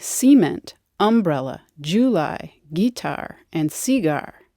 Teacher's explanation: There are differences within the US too, where some say CE-ment, UM-brella, JU-ly, GUI-tar, and CEE-gar.